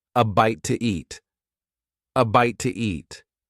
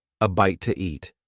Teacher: In fast speech, when one word ends in a vowel sound and the next one starts with a vowel sound, we often add an extra sound to make it easier to say. In this case, The extra sound is W